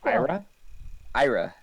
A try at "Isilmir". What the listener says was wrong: Stop that. There's no R. Isselmir.